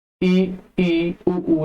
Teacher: समृद्ध स्वर, बोलते समय मुख लगभग बंद रहता है। आप मुख लगभग बंद, छोटा हल्का सा बारीक सा खुलता है इसमें, ई उ लगभग बंद रहता है।